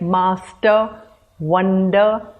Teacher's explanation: Also sometimes within a word, there are stressed and unstressed parts like master, wonder. So the first part of these words is stressed.